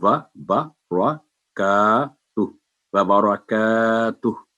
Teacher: तो वह बा रा व बरकातुहू, का की आवाज बारीक होगी, और रा को हमेशा जब भी रा पर फतह होगी, ये बात याद रखेंगे, रा पर जब भी फतह होगी ये इसकी आवाज मोटी हो जाएगी, थिक लेटर बन जाएगा फतह के साथ